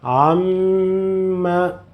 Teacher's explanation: Pronounce it, you will get the sound, the nasal sound. Prolong it or hold it a little bit.